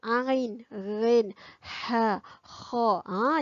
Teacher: Huruf-huruf ni datang daripada tekak, daripada kerongkong kita. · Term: huruf halqi